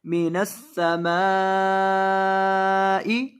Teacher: मीम के ऊपर यहाँ मद होगी, इस वजह से इसको लंबा करेंगे 3 से 4 अलिफ के बराबर